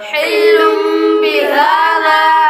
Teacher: ہا پر کھڑا زبر ہے اس لیے اس کو ایک الف یعنی 2 حرکات کے برابر لمبا کریں گے کیونکہ کھڑی حرکات حروف مدہ کے قائم مقام ہے. · تنوین کے بعد با حروف اقلاب میں سے آ رہا ہے اس لیے غنہ کر کے پڑھیں گے